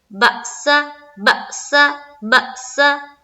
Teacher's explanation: اکشف البأس، یہاں پر جھٹکا دینا ہے، بأس بأس بأس، حمزہ ساکنہ کا جھٹکا دینا ہے